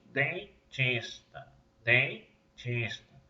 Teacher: Parte do som sai pela boca e parte sai pelo nariz.